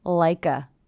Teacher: Also, again here we have ending consonant sound, beginning vowel sound, like a. I hear the K linking to the schwa, like a.